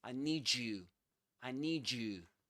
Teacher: The thing is that when we combine the d with the y in the word you, we get ju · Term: connected speech